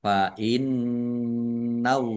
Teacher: Nun tasdid dibaca gunah atau mendengung mendengung ditahan biar tampak dengungannya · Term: gunnah